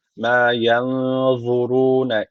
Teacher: Z peltek ve kalın.